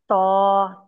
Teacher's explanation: त जुबान की जड़ इसमें उठ जाएगी मुफखम लेटर है